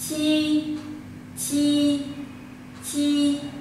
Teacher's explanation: Cái nhóm âm này nó còn có một cái tên gọi khác là nhóm âm mặt lưỡi, tức là sao ạ, cái mặt lưỡi chúng ta hơi đẩy về phía trước, hơi đẩy về lên trên ạ